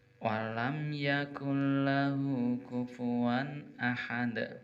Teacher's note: Ahad pendek, kemudian danya adalah memantul atau qalqalah kubro